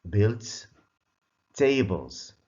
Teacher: the S is pronounced as Z. Why? because it comes after voiced sounds.